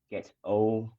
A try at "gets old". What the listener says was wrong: Again, gets old. We don't hear that final D.